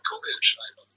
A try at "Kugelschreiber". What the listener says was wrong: You like swallow the R. You have to like put it in front of your mouth pretty much.